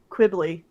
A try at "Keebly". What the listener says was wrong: I think because there's no U, it's the hard K.